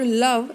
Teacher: The initial sound in the English word love is a lateral.